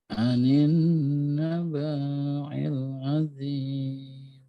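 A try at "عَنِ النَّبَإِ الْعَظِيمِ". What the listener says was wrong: itu bacanya banyak pendek Pak, karena tidak itu yang alifnya itu digunakan untuk tempatnya hamzah. Jadi bukan mat tabi'i, tapi biasa saja.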